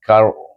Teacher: suku kata pertama kita gabungkan kaf dengan ra, bunyi dengan tebal kar